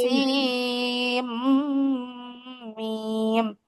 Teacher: ঈদগাম চলে আসছে, কিন্তু ঈদগাম গুন্না, নুন সাকিনের ঈদগামে বাগুন্না আসছে এখানে